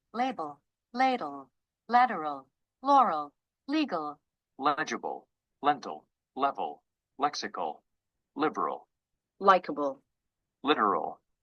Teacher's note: you have the front L at the beginning of the words at the end of the words it becomes a dark L this till sound over here indicates that the L is dark